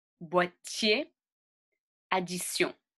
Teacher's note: Donc souvent, ce T et I suivi d'une voyelle donne le son S, comme un S. So when followed by a vowel, that T and I together often will produce that sound like an S.